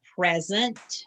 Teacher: with the accent on the first syllable